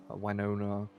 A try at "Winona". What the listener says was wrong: Why did you say it like that? It's Vinona, not wine. Winona? Sounds like wine.